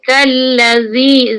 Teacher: hujung lidah letak antara gigi atas dan gigi bawah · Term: zal